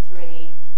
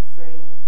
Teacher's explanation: instead of saying three london will say free